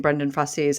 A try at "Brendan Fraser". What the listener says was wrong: there's no I in the name. Like razor.